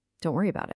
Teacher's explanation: often we'll even reduce about to just bout. The whole phrase just flows together.